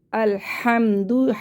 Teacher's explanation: لام زبر ال، حامیم زبر حم، الحم دال پیش دو، الحمد ہا کو حلق سے نکال کے پڑھنا ہے ہواؤں کے شور کے ساتھ